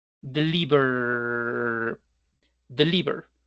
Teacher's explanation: Deliver que vibra el sonido de R, por lo tanto lo vamos a unificar con otro sonido que también genere vibración.